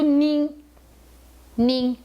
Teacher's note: que é o é o i com Ti em cima então é o som de uma vogal nasal o n não é pronunciado